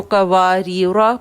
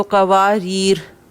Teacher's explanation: جب ہم ملا کے پڑھیں گے تو قواریرا پڑھیں گے، اور اگر وقف کر دیتے ہیں تو قواریر وقف کریں گے، الف نہیں ادا کریں گے، حروف مدہ نہیں بنے گا.